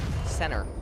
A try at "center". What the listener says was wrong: It almost sounded like you said sinner as well, which